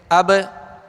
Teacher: ایک تو ہے قلقلہ کرنا، آواز کا لوٹ کے آنا، اور بالکل ایزی قلقلہ، جسے کہہ لیں کہ اب، اور اگر یہ تشدید ہو تو اب قلقلہ کرتے ہوئے اب۔